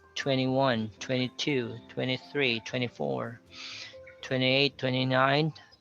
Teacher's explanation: whenever you count from 20 to 29 you say you obscure the t